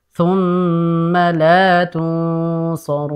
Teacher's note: Jadi untuk thumma, ma-nya pendek saja. Jangan terseret.